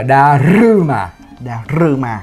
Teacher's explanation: À, tại vì nó viết D-A-R-U-M-A. Nhưng trong tiếng Nhật cái chữ U nó không có, âm U nó không có, là trở thành âm Ư